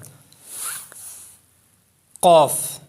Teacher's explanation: آگے ہے لسانی مخارج، اس کو کہتے ہیں حروف لہویہ۔ قاف یہ ادا ہوتا ہے زبان کی جڑ اور تالو کے نرم حصے سے، جو موٹا کاف ہے 2 نقطوں والا، اس کو اصطلاح میں موٹا کاف بولتے ہیں۔